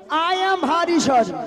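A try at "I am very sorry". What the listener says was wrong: আই এম ভারী নয় মাসি, বলো আই এম ভেরি সরি। ভেরি কে বলে ভারী।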